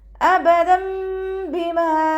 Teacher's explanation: തെൻവീനിന് ശേഷം ഇഖ്ലാബിൻ്റെ അക്ഷരമായിട്ടുള്ള ബാ വന്നു. തെൻവീനിലുള്ള നൂനിൻ്റെ സൗണ്ടിനെ മീമാക്കി മാറ്റി മറിച്ചിട്ട് ഒന്നയോടുകൂടി ഓതിക്കൊടുക്കാൻ ശ്രദ്ധിക്കണേ